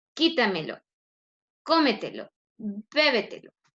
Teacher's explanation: tienen la mayor fuerza de voz en la antepenúltima, o también le llamamos tras antepenúltima sílaba